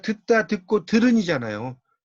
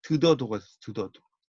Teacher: 평안도 방언은 디귿 변칙 활용이 없다는 거죠